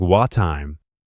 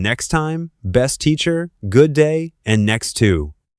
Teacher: Instead of pronouncing both sounds separately, native speakers usually merge them into one.